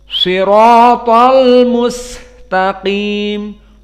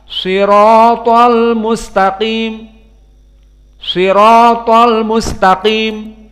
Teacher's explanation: sinnya karena dia rakhaah maka agak panjang maka yang benar dibaca dengan panjang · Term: rokhawah